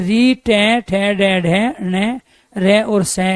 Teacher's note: मूर्धा में टकरा रही है तो आपको यहाँ एहसास होगा कि कोई ऊपर से मार रहा है · जो वायु फेफड़े छोड़ रहे हैं वो सीधे जाके मूर्धा में टकरा रही है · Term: मूर्धन्य